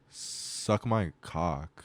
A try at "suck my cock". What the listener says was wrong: No, you gotta do cock faster.